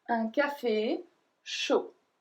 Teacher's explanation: So we don't pronounce the D at the end.